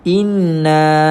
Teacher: wajib kita dengungkan bacaan sekadar dua harakat